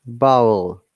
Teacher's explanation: You see, when we're trying to pronounce vowel, our B is plosive sound. We block air fully